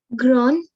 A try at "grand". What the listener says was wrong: No, D is pronounced at the end.